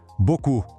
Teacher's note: Tá vendo que termina com um P ali no final? Pois é, mas ele é completamente mudo. A pronúncia para no som do U.